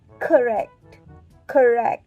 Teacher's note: The word correct has second syllable stress. So with that mean we should use k sound rather than ka sound.